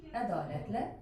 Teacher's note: Ədalətlə sözündə bəli, ahəng qanunumuz pozulub. Biri incə, biri qalın saitimiz var. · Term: ahəng qanunu pozulub